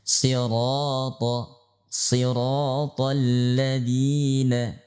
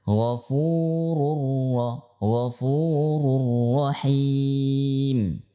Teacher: dalam keadaan fathah kita membaca siratal ladzina, maka kita baca ra dengan tebal, bukan ro, bukan, atau ra, bukan, ya. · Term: sifat tafkhim